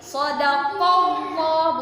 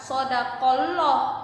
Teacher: bebas tajwidnya juga sodakowloh ada huruf qaf huruf hijaiyah berharokat facs bertemu dengan lafaz Allah maka dibacanya tebal disebut tafkhim